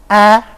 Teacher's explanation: A, which would be a low front vowel